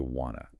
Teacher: want to often becomes reduced to wanna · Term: reductions